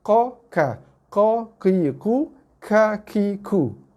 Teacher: keduanya keluar daripada kawasan pangkal lidah